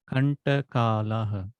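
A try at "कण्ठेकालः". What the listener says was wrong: Kanthe kala. Kanthe kalaha. Tha is Mahaprana or Halpaprana? Mahaprana. So, ntha, ntha. So, kantha.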